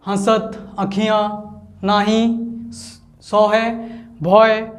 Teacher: अनुनासिक शब्द है जो ब्रज भाषा में जिसका सबसे ज़्यादा उपयोग हो रहा है